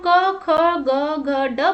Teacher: और इनके क वर्ग में जो व्यंजन आते हैं वो है क, ख, ग, घ, ड। जैसा कि हम क, ख, ग, घ, ड बोल रहे हैं तो इनको उच्चारण करते समय जो है कंठ से आवाज आ रही है, इसीलिए इनका उच्चारण स्थान जो है कंठ है